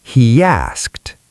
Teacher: He ends in a vowel sound. E. Asked starts with a vowel. So, we need the Y intruder.